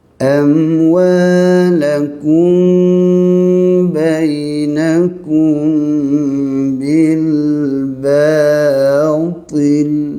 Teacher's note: mim mati dengan ba ni ikhfa syafawi, bibir rapat, dengung kena panjang ya.